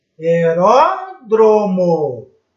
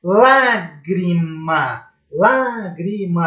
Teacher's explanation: Proparoxítona, eu tenho a sílaba forte, a tônica, na antepenúltima.